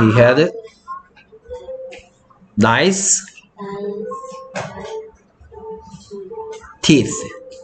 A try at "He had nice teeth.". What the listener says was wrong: teeth가 아니고 th는 s, s, 혀물고 z, s, teeth. 자, 입술이 붙어서 떨어지는데 붙어서 떨어지면 안 돼.